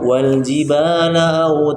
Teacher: terlalu berlebihan memanjangkan seakan-akan dia menjadi mad arim bersukun